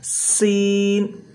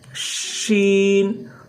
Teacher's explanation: سا بالکل آسانی سے نکلتا ہے، سا، اور ہلکا سیٹی کی آواز، پھر اس میں شین، اس میں پورا سیٹی کی آواز